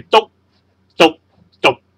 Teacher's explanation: 阴入就系由高音即跌落嚟，中入就系由中音跌落嚟，然之后阳入就系由低音再跌落去嘅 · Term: 入声